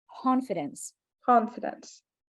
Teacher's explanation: now we're going to say the word confidence like with an H sound like no K only H like imagine that this C is an H sound confidence confidence